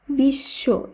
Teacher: এখানে বফলা যুক্ত আছে, কিন্তু বফলা থাকলেও বফলা যেহেতু তালব্য এর সঙ্গে যুক্ত রয়েছে তাই এখানে এই তালব্য এর উচ্চারণ দ্বিত্ব হবে বা দুইবার হবে